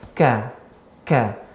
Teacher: pangkal lidah bagian belakang bertemu dengan langit keras, awal langit antara langit lunak dan langit keras. Ka makhrajnya berbeda ya, namun berdekatan seperti itu.